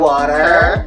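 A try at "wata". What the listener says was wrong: ER change to A. So you say ah.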